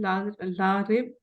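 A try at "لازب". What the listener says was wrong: लाजिब है, लारिब नहीं है।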